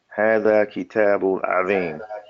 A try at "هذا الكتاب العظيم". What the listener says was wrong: Let me hear the lamb. هذا الكتاب عظيم.